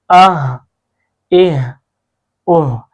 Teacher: ان کا مخرج ایک ہی جگہ سے ہے، اور یہ حلق کے نیچے والے حصے سے ادا ہوتے ہیں